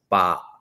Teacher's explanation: the word in Kamai for yes is Bart and it finishes at the back of the throat